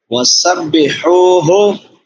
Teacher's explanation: سین سیٹی والے حروف میں سے ہے، اور ہا چھوٹی ہا ہے